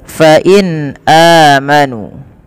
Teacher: nun sukun bertemu dengan Hamzah ini suara nunnya dibaca dengan jelas